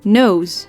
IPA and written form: nøːs (Neus)